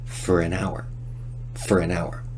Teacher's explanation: in Rapid speech we de-stress four and reduce the vowel to Just Fur